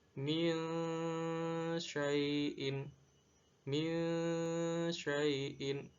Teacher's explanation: ada nun mati bertemu shin, dan shin termasuk salah satu huruf ikhfa, sehingga suara nun mati harus disamarkan. Tidak dibaca min, tapi dibaca min syai'in, min syai'in.